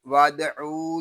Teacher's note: दाल साकिन है, इसमें कलकला होगा।